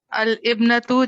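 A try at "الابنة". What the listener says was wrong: اچھا، اس کو الابنۃ نہیں، ہم پڑھیں گے الابنۃ، کیا پڑھیں گے، اور یہ جو ابنۃ کے نیچے حمزہ ہے، یہ حمزہ بھی نہیں بننا چاہیے، حمزہ وصل کے نیچے کبھی بھی حمزہ نہیں بنتا، ابنۃ کا حمزہ حمزہ وصل ہے۔ अलिब्नतु जालिसतुन, क्या तर्जुमा हो गया?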